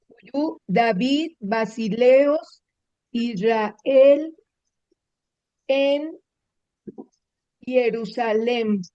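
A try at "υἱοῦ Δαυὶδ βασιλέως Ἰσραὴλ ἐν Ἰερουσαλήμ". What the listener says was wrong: Eso. Muy bien.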